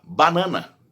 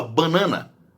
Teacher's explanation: tem lugar do Brasil em que a pessoa fala banana, sendo esse primeiro aí o an nasal